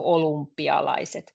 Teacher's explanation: When a Finnish person says olympialaiset, because it's quite difficult for us to say o and y in same word. So when we actually pronounce this, olympialaiset, this y easily starts sounding like u.